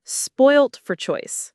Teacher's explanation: The stress is on spoilt and choice.